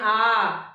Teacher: विवृत में जब हम बड़ा आ कहते हैं आ तो हमारा क्या है मुंह खुल जाता है